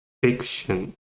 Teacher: fiction stresses on the first syllable